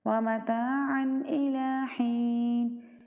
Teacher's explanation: متاعًا یہاں پہ ہم اظہار کریں گے کیونکہ آگے حروف حلقی میں سے حمزہ ہے